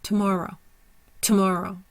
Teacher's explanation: So we have two more row. Primary stress is on the more. Secondary stress is on the row. Our schwa is in the two.